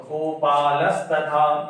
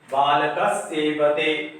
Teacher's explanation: जैसे गोपाल प्लस तथा, पहले त थ और दंत स को देखते हैं तो त है यहाँ पर, इसलिए विसर्ग के स्थान में दंत स हो गया